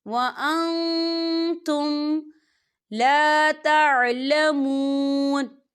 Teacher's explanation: واللہ یعلم، یعلم وانتم، وانتم دیکھیں وَأَن، یہاں نون ساکن ہے اور نون ساکن کے بعد تا آ رہا ہے، اور تا جو ہے اقفا کا ورڈ ہے، تو ہم یہاں اقفا کریں گے، نون ساکن کی آواز کو ناک میں چھپائیں گے